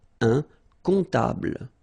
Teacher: Un comptable, so OM, remember, it goes like on, all right? And then, strangely, this P is not pronounced.